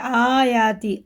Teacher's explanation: ہے آیاتی، آیاتی نہیں پڑھیں گے، آیتی بھی نہیں پڑھیں گے، دونوں کو برابر کھینچنا ہے، کیونکہ دونوں پہ کھڑا زبر ہے، مدہ کی طرح کھینچ کے پڑھیں گے